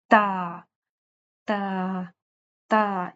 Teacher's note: अब ता को जुबान की नोक को हमने ऊपर सामने के दो दांतों से लगाना था उनकी जड़ से। · زبان کی نوک کو ہم نے اوپر سامنے کے 2 دانتوں سے لگانا تھا، ان کی جڑ سے